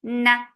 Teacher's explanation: So keep the sound in your nose for a longer time. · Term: gunna